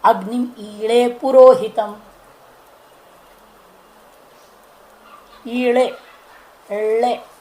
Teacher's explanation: ल है क्या वास्तव में? इ डे था वो ड का उच्चारण हो गया ल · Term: दुष्पृष्ट